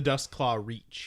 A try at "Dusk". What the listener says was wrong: Not dust. Dusk. with a K.